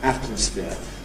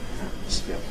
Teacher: Also, before nasals, if we have a word like atmosphere, certainly that's my normal pronunciation. I have a careful variant, atmosphere, but I don't normally say atmosphere with nasal release noise. I normally say atmosphere with a glottal stop.